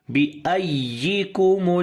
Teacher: We raise our voice on the ya to show there is 2 ya, not 1. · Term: nabr